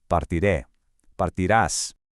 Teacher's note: force your voice to stress that final syllable, which is what gives the Spanish future tense its distinct punchy sound